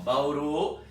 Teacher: Tem sim, mas se eu não colocar a acentuação gráfica, vai existir o acento prosódico. Então, Bauru é uma oxítona, a sílaba forte é uru.